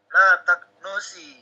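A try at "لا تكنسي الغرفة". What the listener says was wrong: No-nya pendek. La taknusi.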